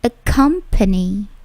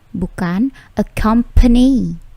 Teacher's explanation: Accompany, bukan accompany, tetapi accompany. P-nya sedikit plosif, tidak plosif yang terlalu besar, tetapi plosifnya ada ya.